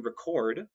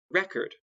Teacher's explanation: the verb to record with stress on the second syllable and the noun record with stress on the first syllable